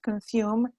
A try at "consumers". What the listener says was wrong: you need to complete the word when you're saying it